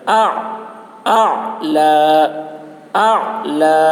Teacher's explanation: عین حلق سے ادا کرنا ہے